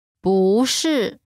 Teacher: when 不 is followed by a fourth tone, its tone changes from the fourth tone to the second tone